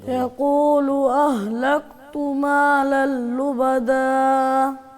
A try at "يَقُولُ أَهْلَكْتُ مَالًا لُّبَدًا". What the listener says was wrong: اتنا لمبا تو نہیں کرنا. ایک الف.